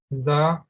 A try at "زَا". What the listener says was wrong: اب یہ دیکھیں آگے الف ہے، اس کو تھوڑا سا لمبا کر کے آپ پڑھیں. یہ زا ہے، یہ زا یہ ہے، یہ سافٹ ہے.